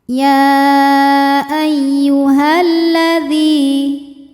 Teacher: Ya ayyuhalladzi dzi hukumnya adalah mad thobi'i zohiri. Sebab ya sukun didahului baris kasrah maka huruf dzal panjang dua harakat.